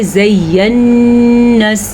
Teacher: ناک میں آواز چلی جاتی ہے اور گونج پیدا ہوتی ہے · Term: غنہ